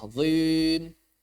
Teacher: Suaranya nggak kasroh, dia bercampur sama fathah. Azim. Karena yang namanya fathah karena yang namanya kasroh atau mad iya itu pasti otomatis tipis.